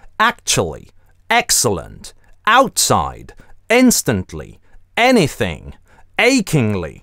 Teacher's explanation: слово начинается с твердым приступом, мы крякаем в начале actually